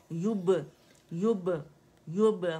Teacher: युब बा complete touch करेंगे, ठीक है, युब युब यू दमा, या के ऊपर दमा है, complete rolling of the lips होगी